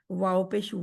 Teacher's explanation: वाव के लिए आपके होठ गोल होंगे क्योंकि वाव का मखरज ही होठों की गोलाई है